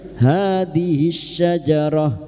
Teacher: ha alif kecil di atas dua harakat kita panjangkan mad thabi'i hadis syajarah alif lam syamsiyah lam takrif yang bertemu syin idgham syamsiyah atau alif lam syamsiyah hadis syajarah kita wakaf di sini maka Ta marbuto ini jika dibaca wakaf bunyinya ha syajarah.